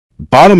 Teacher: In some British speech, a T can become a brief pause or glottal sound. The word bottom may sound as though the middle T disappeared.